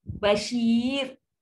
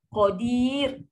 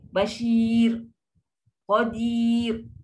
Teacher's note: kalau sebelum dia ada huruf ya yang kosong, ni pun ya yang kosong, automatik ra ni pun nipis juga